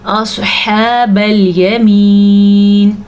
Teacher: سواد کو پر پڑھنا ہے، ہا کو حلق سے اچھے طریقے سے نکالنا ہے